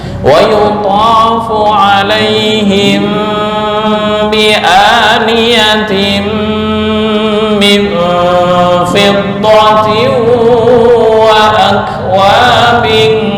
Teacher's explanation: Mim mati bertemu ba, bacaan ikhfa syafawi, dengung ditahan.